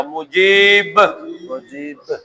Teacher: با ساکن ہوتی گئی تو اس پہ کلکلا بن گیا